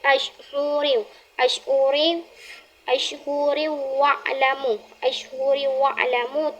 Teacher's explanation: Hukum bacaannya di sini dengung dikarenakan termasuk kepada idgham bi gunnah